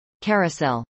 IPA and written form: kˈɛrəsˌɛl (carousel)